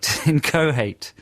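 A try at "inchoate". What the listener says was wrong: I've always said incohate when I've said it out loud. No H in there.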